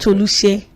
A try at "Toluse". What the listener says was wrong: Toluse. So in Yoruba, there's no SH.